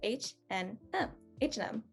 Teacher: not india so yes this is h and m uh again since that and sign is in the middle we've normally just like smushed it into the rest of the words so it just becomes an n